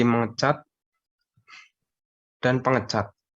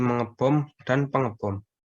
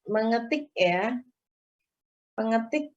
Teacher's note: Mengalami penambahan bunyi vokal menjadi menge dan penge ya.